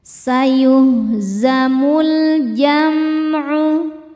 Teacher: Di sini ada hukum alif lam qamariyah sebab alif lam menghadapi huruf qamariyah yaitu huruf mim, huruf jim ya. Maka cara membacanya lam dibaca dengan jelas atau idhar qamari.